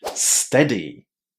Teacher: this word is pronounced with a short E, the same E that we have inside of the word pet or get